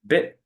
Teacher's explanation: When I put my hand in front of my face and say bit, I feel a smaller puff of air.